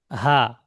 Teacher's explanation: হামজাহা হলক বা কন্ঠনালীর শুরু হতে উচ্চারিত হয় হলক কোনটা এই গলা থেকে নিয়ে আর এই নিচে পর্যন্ত যেটা